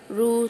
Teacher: جب ہم پڑھتے ہیں رو تو ہمارے ہونٹ جو ہوتے ہیں خود بخود گول ہوتے ہیں · تو جیسے ہم پڑھتے ہیں ان الذین کفروا، رو، یہ جو رو کا ساؤنڈ آ رہا ہے نا، یہ کہاں سے آ رہا ہے؟ منہ کے اندر کی خالی جگہ سے، یعنی جوف دہن سے یہ رو کی آواز آ رہی ہے۔ تو واو مدہ جو ہے یہ یہیں سے ادا ہوتا ہے۔